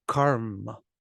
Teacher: the first syllable is long because it requires preparation for the two consonants